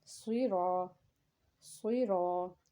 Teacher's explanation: और आगे अलिफ है, अलिफ से पीछे ज़बर होने की वजह से ये मद्दे असली है और हम एक अलिफ के बराबर इसको खींच के पढ़ेंगे